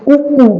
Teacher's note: उ बोल के देखा तो होठ एकदम गोल, ओ बोल के देखे तो होठ एकदम गोल · तो होठों की स्थिति पूरी तरीके से गोल हो जाएगी